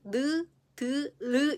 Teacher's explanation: 윗 잇몸에 혀끝을 붙였다가 떼면서내는 소리였고